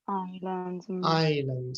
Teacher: Island, the S is silent.